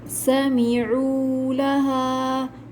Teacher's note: فیہا سمعوا لہا، رو میں واو مدہ ہے، لہا پہ یہاں پر الف مدہ ہے، الف خالی سے پہلے زبر ہو الف مدہ ہوتا ہے، 2 کاؤنٹس کھینچ کر پڑھیں گے۔